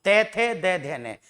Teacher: जीभ आएगी दांत के पास तभी दंते बनेगा।